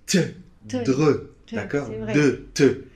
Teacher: le T et le D, on les fait avec la langue collée au palais